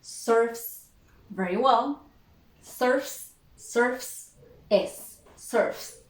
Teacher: The last sound is f. Okay, so it is voiceless.